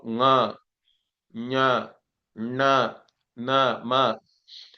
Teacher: instead of sending the air through the mouth you have to send it through the nose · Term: nasal